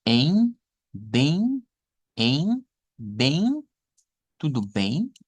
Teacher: Se nasaliza, la M no suena como tal, se nasaliza con el diptongo EI, que sonaría a bem, en, bem, tudo bem.